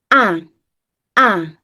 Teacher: Huruf hamzah diucapkan dengan menggetarkan pita suara. Jadi, pita suara letaknya ada di sini ee di pangkal tenggorokan. · Pita suaranya bergetar, mulutnya terbuka, dan posisi lidahnya istirahat.